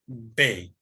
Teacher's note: हरफ बे और मीम को होठों को मिलाने से अदा होता है